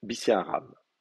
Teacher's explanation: vous avez deux schwa. Le premier va remonter en voyelle pleine, donc ça va faire bi.